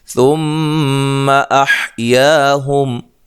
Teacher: میم مشدد پہ غنہ ضروری ہے ، یا الف مدہ ہے، حمزہ کو تحقیق سے پڑھنا